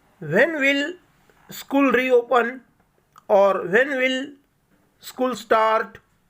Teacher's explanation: It's a question, that's why it has to be completed in a rising tone while reading.